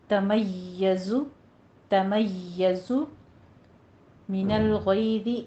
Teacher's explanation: تکاد تمیز، یا کے اوپر تشدید ہے، سختی کر کے آگے زائے کے اوپر سیٹی کی آواز لے کر آنی ہے